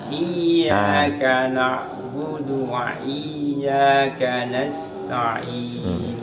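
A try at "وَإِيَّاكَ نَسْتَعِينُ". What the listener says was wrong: Ulangi, jangan wa iya jadi ain. Iyyaka na'budu wa iya. Masih ain, Pak. Jangan wa'i, wa'i.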